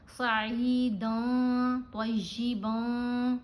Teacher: نون کی آواز کو ناک میں چھپا کر پڑھنا ہے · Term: احفا